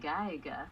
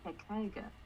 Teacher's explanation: I think that the H is going to block the voicing.